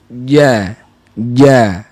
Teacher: makna nafas tertahan dia tertahan kerana kita bawa daripada Tengah lidah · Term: jahar